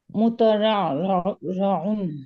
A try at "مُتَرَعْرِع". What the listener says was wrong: না, এটা রয়ের নিচে জের হবে। ইসমুল মাফউল।